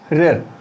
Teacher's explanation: आप बोल के देखें, उच्चारण करके देखें, आ, ई, उ, रिर। और रिर बोलते हैं तो जीभ में करंट भी दौड़ रहा है, ऐसा लग रहा है जीभ पीछे से आगे की ओर आ रही है